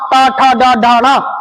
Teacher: ट वर्ग का उच्चारण स्थान मूर्धा